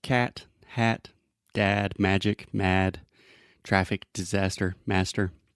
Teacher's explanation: start with the first sound this is the a sound and it is a very open Sound which means our tongue position is low and our mouth is very open